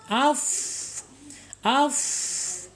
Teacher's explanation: Awas kaidah Fa ini tidak boleh tertutup ya walaupun di dalam makhraj asyafatain tetapi kaidahnya e gigi seri atas menyentuh perut bibir bagian bawah